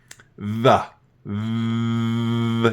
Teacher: In order to make that sound, you got to put your tongue up and touch your top teeth. Actually, you put your tongue in between your teeth, don't you?